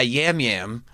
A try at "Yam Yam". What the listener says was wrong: Jam Jam. It's spelled Yam Yam, but it's pronounced Jam